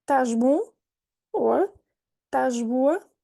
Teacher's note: you might not hear the beginning of the verb